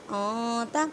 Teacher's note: نون ساکن کی آواز کو چھپانا ہے ایک الف کی مقدار میں